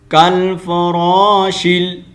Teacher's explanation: شین کو ہم نے آگے لام کے ساتھ کنیکٹ کرنا ہے اور میم کو پھر آگے الگ پڑھنا ہے. کالفراشل، ٹھیک ہے، شیل شین زبر شین زیر لام، شیل.